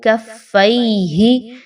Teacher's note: فا یا زبر فی، اور چونکہ فا کے اوپر تشدید ہے تو کاف اور فا کو مضبوطی کے ساتھ ملائیں گے